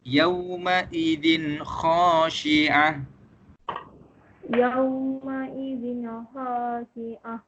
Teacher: Itu adalah cara macam mana kita nak baca izhar halqi. Kita baca nun tersebut dengan jelas